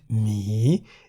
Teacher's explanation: mi in the rising tone, meaning the animal bear